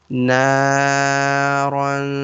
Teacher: we will make this noon sound longer because of alif madda. Naran. So this there will be ikhfa sound on this end.